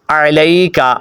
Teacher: اپ نے عین کو خوبصورت کر کے پڑھنا ہے عین کو حمزہ نہیں پڑھنا عین پڑھنا ہے